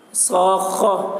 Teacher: صاخہ، حرف مد کے بعد والے حرف پر تشدید ہے، اس لیے مد لازم کلمی مثقل ہوا۔ مد لازم کلمی مثقل کو 3 یا 4 الف کے برابر کھینچ کر پڑھیں گے